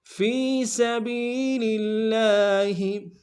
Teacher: سین کی سیٹی باریک ہوگی